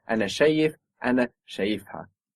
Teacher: we see the accent moving down when we're putting on that extra syllable